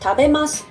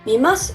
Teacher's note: When you say these words, you actually pronounce the vowel u, but the vocal cords don't vibrate enough, and you can't hear the sound u well. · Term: voiceless vowels